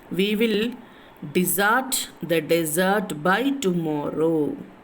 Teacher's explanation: the last part of the first desert is stressed, while the last part of the second desert is unstressed